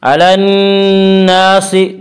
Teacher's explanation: نون مشدد غنہ ہوگا، غنہ کی مقدار 1 الف ہے۔